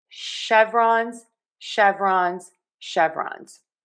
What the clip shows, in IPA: ˈʃɛv.rɑnz